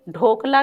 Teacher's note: इसका उच्चारण है हमारे लिए निरनुनासिक्य। मतलब नासिका का कोई प्रभाव यहां पर नहीं है।